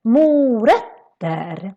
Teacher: The O in mo is quite long, mo. And then the ö, which is this letter with two dots in Swedish, that becomes very short. So it's not ö, it's more like ö, because we have two consonants coming after it.